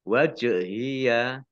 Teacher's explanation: jim sukun bacaan qalqalah dibaca memantul